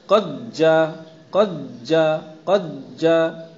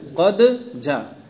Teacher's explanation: پہلے دال میں قلقلے کا اہتمام کرنا چاہیے، لوٹتی ہوئی آواز لانے کا التزام کرنا چاہیے۔ یہ لوٹتی ہوئی آواز ہی ادغام و اظہار کے مابین تمیز کا سبب بنے گی۔